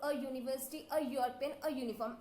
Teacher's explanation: the words sound as they begin with the consonant Y, not a vowel. So we use a before them, not an.